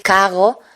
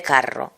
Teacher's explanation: Puerto Rico fue el único lugar del mundo hispánico en que se ha empezado la R velar. O sea, la R que se convierte en G, como en francés. Un ejemplo es decir cago en vez de carro.